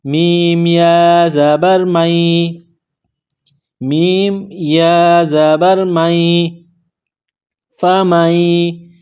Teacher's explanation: تو میم کو یا کے ساتھ ملائیں گے تشدید کی وجہ سے۔